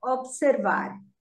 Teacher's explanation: Observar is pronounced with stress on the last syllable. In English, we say observe, but here we say observar.